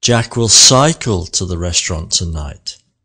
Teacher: shift the emphasis to cycle not drive or walk